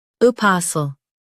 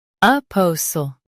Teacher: Stress pa in US, po in UK. Keep sl soft.